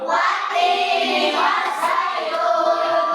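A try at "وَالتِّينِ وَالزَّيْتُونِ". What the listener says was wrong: Tinya jangan panjang ya. Wattini wazaitun ya.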